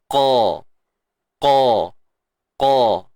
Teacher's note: qa baris atas, qa, kita rasa pangkal lidah tu naik. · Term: huruf qaf